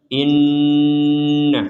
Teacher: Di sini ada nun bertasydid, maka kita membacanya dengan dengungan.